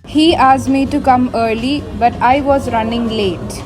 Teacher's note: She reduced ask me to ask me or making the sound C. This is a case of consonant cluster elision where the SC cluster is simplified. · also shows better fluency when she dropped the sound R when pronouncing early.